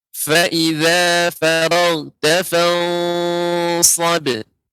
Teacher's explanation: nun mati bertemu dengan shad ini dibaca dengan tebal ya karena shad adalah huruf isti'la. Jadi fan ya naiknya suara ke langit-langit ya.